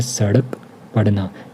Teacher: उसके बाद अन्य प्रकार के जो व्यंजन होते हैं, तो देखो उत्क्षिप्त व्यंजन होते हैं। इनकी उच्चारण में जीभ ऊपर उठकर झटके से नीचे गिरती है, इसे द्विगुण व्यंजन भी कहते हैं।